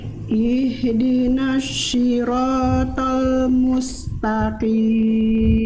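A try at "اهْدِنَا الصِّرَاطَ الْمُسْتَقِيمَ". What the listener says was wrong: Oke, bukan ihdinasy, bunda. Di sana ada huruf shad. Huruf shad itu dia, kalau yang tadi bunda lafalkan itu namanya huruf shin.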